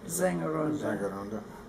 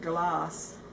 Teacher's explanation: Now, actually, the first letter of when the S is the first letter, it sounds more like an English Z